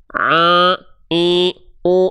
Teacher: Kesalahan kecilnya di poin kedua, yaitu suara masuk ke dalam rongga hidung sehingga sengau, itu salah.